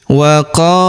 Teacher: Huruf ku kita panjangkan dua harakat karena terdapat wau sukun di depannya.